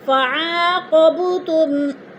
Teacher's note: فعاقبتم، فعا پہ الف مدہ، قوب پہ قلقلہ ہو رہا ہے، با ساکن اور حروف قلقلہ میں سے ہے تو با کو ہلا کر پڑھیں گے